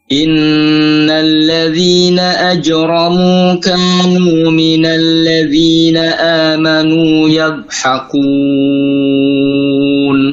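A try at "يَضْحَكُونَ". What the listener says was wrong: yadhaku kunya tipis. Antum baca yadhakun.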